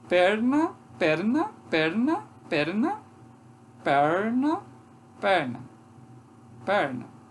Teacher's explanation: é como se fosse pronunciar o teto só que não chega a dar aquela batida lá só se aproxima